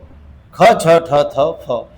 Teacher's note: महा म्हणजे मोठा, प्राण म्हणजे वायू. ज्याचा उच्चार करताना जास्तीचा प्राणवायू बाहेर फेकला जातो त्याचं नाव महाप्राण